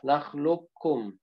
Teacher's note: Jadi qafnya seolah-olah tidak ada.